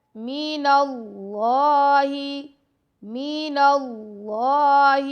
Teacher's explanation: اللہ کے نام کو موٹا پڑھیں گے